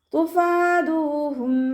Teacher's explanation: ഉയർത്തി ഉച്ചരിക്കുക. തുഫാദൂഹും ഫ ലൈറ്റാക്കിയിട്ട് ഉച്ചരിക്കുക കേട്ടോ. നമ്മുടെ മേലെ മുൻപല്ലിൻ്റെ അറ്റം താഴെ ചുണ്ടിൻ്റെ ഉൾവശത്ത് നനഞ്ഞ ഭാഗത്ത് വെക്കുക.